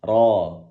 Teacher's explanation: ro-nya tebal, ro tidak perlu menggerakkan bibir, ro cukup gini, ro, pangkal lidah naik.